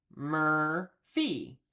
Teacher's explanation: you can hear that the R sound, that is kind of built into that vowel.